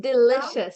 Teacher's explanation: It's pronounced delicious. So there's a sh sound in the middle.